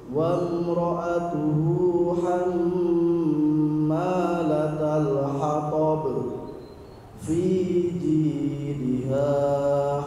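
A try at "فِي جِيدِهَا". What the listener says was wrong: Kepanjangan, Pak, ulangi. Diayun. Fi jidha hab. Tidak diayun, jangan lupa.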